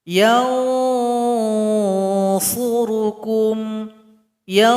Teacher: Nun sukun berjumpa dengan sad, maka bunyi ikhfanya mengarah kepada huruf sad. · Bunyi ikhfanya mengarah kepada huruf sad. Huruf sad tempat keluarnya ujung lidah tempelkan ke belakang gigi seri paling bawah. Ketika ditempelkan maka di situ seimbang bunyi ikhfa dengan bunyi dengungannya. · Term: ikhfa awsat